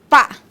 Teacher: Bilabial, porque nós articulamos tanto o lábio inferior quanto o superior